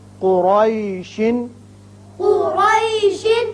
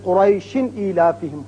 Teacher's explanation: لیکن جب وقف کریں گے تو یہ شین ساکن ہو جائے گا